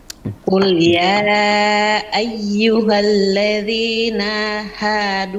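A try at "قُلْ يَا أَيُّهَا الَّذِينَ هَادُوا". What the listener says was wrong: Enggak panjang nanya. Nanya enggak panjang. Jangan dipanjang. Ladzina hadu, enggak. Ladzina hadu.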